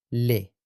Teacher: Escucha la lateral velarizada, le, la llamada L oscura.